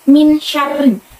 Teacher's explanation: Lalu juga ada pada surat Anas ayat 4 itu juga min syarrin. Di situ ada nun sukun bertemu sya dan cara bacanya sama-sama di bibir membentuk huruf sya